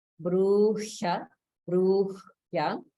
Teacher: We also have some holding after dirgha, where the holding is on the ha.